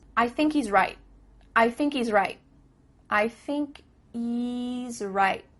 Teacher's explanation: there's no h Happening Here · at the end of the word right there's no T sound